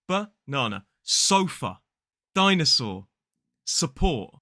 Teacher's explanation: all of these words use the schwa in that unstressed syllable